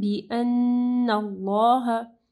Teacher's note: اللہ کے نام سے پہلے دیکھیں نون کے اوپر زبر ہے تو اللہ کا نام جو ہے وہ ہیوی پڑھا جائے گا